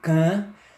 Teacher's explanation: a pronúncia desta palavra tanto sai pela boca quanto pelo nariz parte do ar exalado sai pelo nariz e outra parte pela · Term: vogais nasais